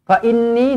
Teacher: Fa inni nun sabdu wajibul gunnah, dengungkan dua harakat juga.